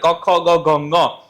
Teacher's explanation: ક ખ ગ ઘ એ કંઠમાંથી બોલાય